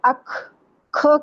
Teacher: یہ دونوں حروف جو ہیں ان کو دو چشمی ہا کی طرح ساؤنڈ کے ساتھ پڑھتے ہیں، جیسے دو چشمی ہا لگ جائے نا اس کے ساتھ، تو اک کی بجائے اک، کھ کی آواز، تو اس سے یہ ہوگا کہ اس پہ کلکلا یعنی ہلے گی نہیں اس کی آواز۔